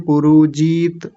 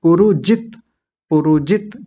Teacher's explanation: जित बोलेंगे तो ज पर छोटी इ की मात्रा जीत मत बोलिएगा